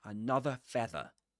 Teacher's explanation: Without pronouncing the final R.